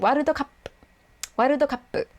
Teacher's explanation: It has a small tsu in there between the ka and the pu because they want to really emphasize, okay, you shouldn't really pronounce the u part at the end.